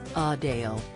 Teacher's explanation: with a slight emphasis on the second syllable